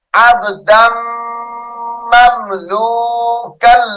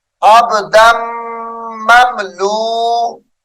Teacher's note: دال کو میم مشدد کے ساتھ ملا کر غنہ کریں گے یعنی ادغام